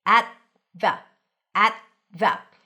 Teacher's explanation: You don't have to pop the T.